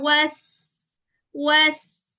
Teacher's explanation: वस सीन की आवाज थोड़ी ज्यादा चलती है। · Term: सफीर